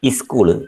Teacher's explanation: people pronounce the consonant clusters along with an additional vowel